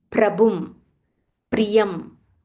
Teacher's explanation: So whenever there is pra, there is a half pa and a ra. Always stress on that half pa.